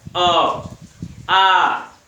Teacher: मुख से निकली वायु कहीं रुक नहीं रही है, एकदम निर्बाध गति से बाधा रहित बाहर निकल आ रही है। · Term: स्वर